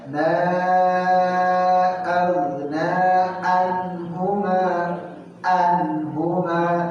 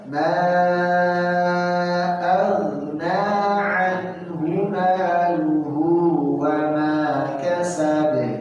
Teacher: salah fatal karena di sana ain bukan hamzah